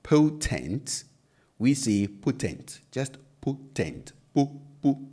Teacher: Because in Chi, and I'm sure in other indigenous languages of Ghana, the O is an absolute O. It's a pure O sound, a single sounding O, not a diphthong. So it doesn't move from one sound to another like you do in English. So while you say potent, we say potent, just potent, po, po, because it's a pure O sound.